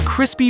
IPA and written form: ˈkrɪs.pi (Crispy)